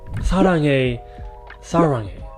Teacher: the more rolled R in Korean versus the more hard R in English.